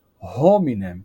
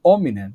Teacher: em vez de pronunciar hominem com o H, dizerem hominem sem o H, porque um comentário, a letra H em latim originalmente ela era pronunciada, ela representava um som de H, uma aspiração.